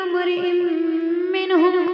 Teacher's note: منہم میں میم پہ تشدید غنہ ہوگا